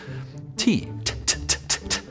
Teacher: That's your tongue tapping on the roof of your mouth